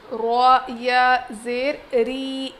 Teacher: را کو موٹا پڑھتے ہیں لیکن را پر زیر آ جاتی ہے تو ہم اس کو باریک پڑھیں گے